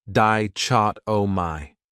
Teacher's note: This word has 4 syllables, and the stress is on that second syllable, dichotomy. That third syllable has that schwa, that sound, di-chot-o-my.